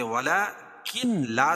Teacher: نون بالکل حذف ہو گئی، ختم ہو گئی